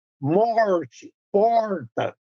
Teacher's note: esse R que chamam de R retroflexo